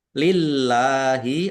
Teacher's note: Allahnya dibaca tipis karena harokat di depannya kasroh. Lam fathah berdiri mat tobi'i.